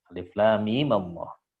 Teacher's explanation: fathah tetap menjaga ketebalan lafaz Allah dan tidak merancukan makna